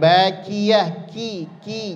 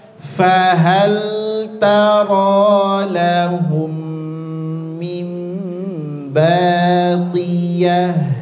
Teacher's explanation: di dalam pangkal lidah ditempelkan ke tenggorokan bahagian dalam.